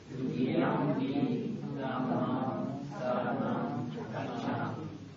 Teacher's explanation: I keep on hearing ums, but that M with the dot under it should be ung.